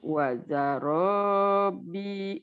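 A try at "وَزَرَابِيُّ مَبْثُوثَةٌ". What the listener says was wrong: Enggak, wazarabiyu dipanjangkan biu.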